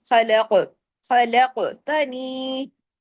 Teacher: कफ heavy letter है लेकिन कफ जज्म की हालत में कलकला भी होगा। हैवी भी होगा।